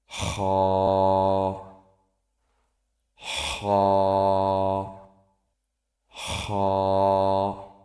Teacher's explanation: খ উচ্চারিত হয় কণ্ঠনালীর শেষ হইতে।